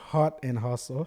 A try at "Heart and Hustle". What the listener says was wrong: Heart and hustle. Heart. Okay, because it sounds like you're saying hot. But no,